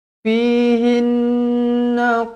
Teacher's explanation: nun yang bertanda sabdu wajibul gunnah dengung 2 harokat